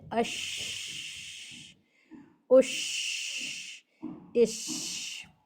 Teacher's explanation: ایک تو یہ کہ اس کی آواز میں پھیلاؤ ہونا چاہیے، دوسرا یہ کہ اس کا مخرج زبان کا بیچ اور اوپر کا تالو ہے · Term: شین